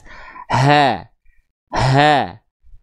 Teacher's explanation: H besar itu dilafalkan keluar dari tenggorokan paling bawah atau pangkal tenggorokan. Memiliki sifat mengalir nafas dengan karakter biasa.